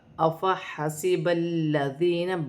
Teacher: لام مشدد ہے، لام کو اپنے سے پہلے حرف کی حرکت کے ساتھ ملا کر پڑھا جائے گا، با کی حرکت کے ساتھ ملا کر پڑھا جائے گا۔